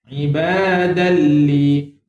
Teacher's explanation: Kenapa li panjang? Sebab ada dua harakat.